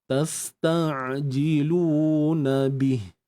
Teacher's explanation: Mat asli 2 harakat lah. Muncung bibir sebab baris depan pada lam tu.